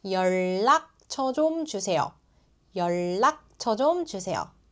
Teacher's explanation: 연락 changes to 연락. Written 니은 and 리을, spoken 리을 and 리을.